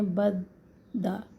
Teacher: تشدید کے اندر پہلا دال ساکن ہے تو اس پر قلقلہ نہیں ہوتا